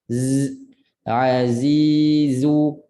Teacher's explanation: Zai ingat bila jumpa zai je mesti bunyi kuat. Bunyi macam lebah.